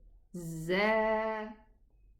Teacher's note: Don't confuse the sound between this one and dhal. This has a whistling sound. It's Z. Z. It's a buzzing sound.